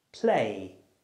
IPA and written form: pleɪ (play)